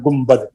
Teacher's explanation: गुम्बद लिखा जाता है नून के बाद मीम पढ़ते हैं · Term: इक़लाब